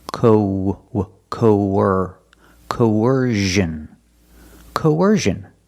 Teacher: when we link these two vowels there's a sound in the middle it's a ww sound like a w linking the vowels